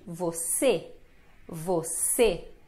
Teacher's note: Você, a mais forte é o C, é a segunda sílaba.